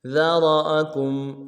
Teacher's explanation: موٹا کریں گے، ذرا، حمزہ کو نرم سے ادا کریں گے، کاف کو میم ساکن کے ساتھ ملانا ہے، میم ساکن میں غنہ کریں گے